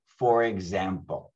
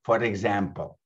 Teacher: The R in for connects with the e sound in example. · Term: phonetic linking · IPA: /fə-reg-zæm-pəl/